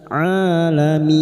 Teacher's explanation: bertemunya mad dengan huruf hidup yang dibaca wakaf mad arid li sukun empat harakat kita panjangkan